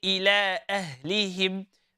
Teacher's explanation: with the letter ha, sister, again, from the bottom of your throat